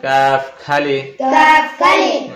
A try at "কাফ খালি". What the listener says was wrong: আরেকটু আসতে, কাফ খালি।